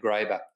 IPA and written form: ˈɡreɪbər (Graeber)